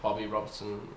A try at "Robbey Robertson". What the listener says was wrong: Robbey. It's Robbey Robertson. No, you said Bobby.